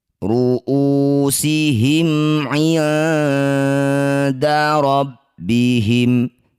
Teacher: Ini disebut bacaan namanya ikhfa aqrab. Bunyi nun dengungkan 2 harokat. Ketika dengung lisan kita sudah bersiap bunyikan dal.